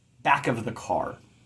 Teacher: Back is stressed. Car is stressed. Of the isn't stressed.